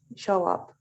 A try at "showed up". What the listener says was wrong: showed up. Showed con D, la pronunciación. Showed. And then up. Showed up.